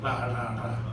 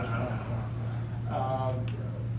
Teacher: Klingon R is a light trill